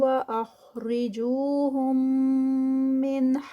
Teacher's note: ایک میم کو جو ہے وہ پیچھے چھوڑ کے اور اگلے والے میم میں جب ہم مرج ہوں گے تو اس کو ادغام شفوی بولتے ہیں